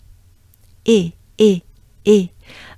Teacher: the sound e the air you excel goes up your mouth it stays in your mouth and it goes up towards your nose